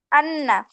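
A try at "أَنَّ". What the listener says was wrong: নুনে টান হবে না? গুন্না হবে না? নুনে টান হচ্ছে না তো, একসঙ্গে দাও, গুন্না আবার টান। আন্না।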